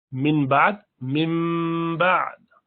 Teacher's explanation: نون ساکنہ کے بعد با آیا، میم بن جاتا ہے، اسے قلب کہتے ہیں.